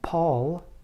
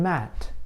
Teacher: Let's talk about sounds involving both lips. The sounds p, b, m are examples of sounds that require you to use both of your lips to block air.